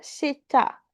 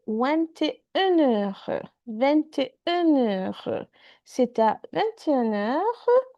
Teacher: we never forget our liaison when we are saying numbers and heure, because heure starts with a vowel sound again